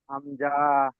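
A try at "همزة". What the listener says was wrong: এই হামজাতে টান দিলেন কেন ভাইজান? আরো স্পিড করতে হবে। হাম- হ্যাঁ।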